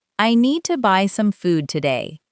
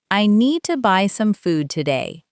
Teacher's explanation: The important words are need, buy, food, and today. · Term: rhythm